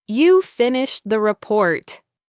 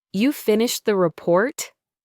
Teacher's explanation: I realized then that if he had used a rising intonation at the end, "You finished the report?" It would have been a clear question, but his falling intonation made it sound like a statement, and in that context, a slightly accusatory one.